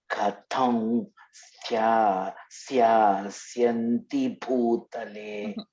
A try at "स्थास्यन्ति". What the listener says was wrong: No. No. No ya. Stha. S-T-H-A, stha.